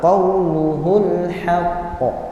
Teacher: Qaf itu di pangkal lidah sedangkan waw di bibir. Nah, jauh sekali sehingga dibaca dengan jelas idhar qauluhul haqq.